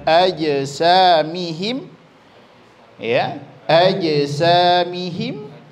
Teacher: Maka makhraj huruf jim itu di tengah lidah, maka pantulannya cukup di tengah lidah saja.